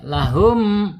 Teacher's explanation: ketika mim sukun menghadapi selain ba dan mim, maka idhar syafawi, mimnya harus dibaca jelas ya